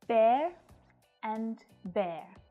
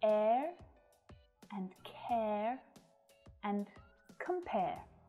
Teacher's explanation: both of these words use the /eə/ diphthongs sound. The same sound that you'll hear in words like air and care and compare.